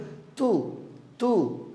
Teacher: তা হরফটি হামসের হরফ অবশ্যই পড়ার সময় বাতাস বের করে পড়বেন